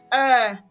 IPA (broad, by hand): ɜː